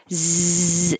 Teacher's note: it's like an s but with sound you need lots of airflow